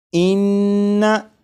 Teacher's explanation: नून मुशद्दद की अदायगी के वक्त ज़बान तालू से लगेगी